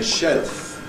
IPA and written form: ʃelf (shelf)